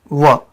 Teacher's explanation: और अगर हम व की बात करें तो ये दंत और जो है ओष्ठ से होता है। व का उच्चारण जब बोलेंगे दंत और ओष्ठ दोनों से होगा, व यानी दांत और ओष्ठ से दोनों से।